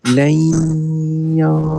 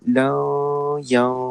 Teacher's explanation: memasukkan lam bunyi lam tu masukkan dalam huruf ya terus. Lai ya bukan la ya. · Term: idgham maal ghunnah